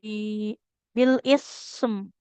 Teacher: antara huruf sa dengan huruf mim lebih lama durasi mengalir suaranya untuk huruf sa ya. Karena huruf sa kan raqoah.